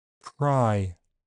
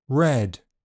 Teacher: R is devoiced after voiceless consonants